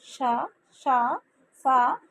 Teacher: ఊది పలికా అక్షరాలను ఉష్మాలు అని అంటారు